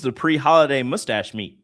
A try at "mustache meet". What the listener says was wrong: You can't say mustache meat.